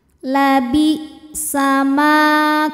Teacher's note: Sebab ada alif didahului harokat fathah, maka huruf mim ini panjangnya hanya 2 harokat saja. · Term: mad tabi'i dhahiri